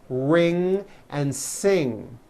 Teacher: NG sound comes out out of your nose It's a combination of an n and a g and it